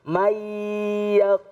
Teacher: Nah, nun mati bertemu dengan ya. Ya adalah huruf idgham biguna. Jadi harus diidghamkan, didengungkan. Mayyaqulu. Nah, ini salah satu daripada hukum idgham biguna.